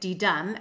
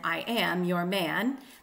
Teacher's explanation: It is a two-syllable foot, unaccented followed by accented, didum, as in I am your man. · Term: iambic foot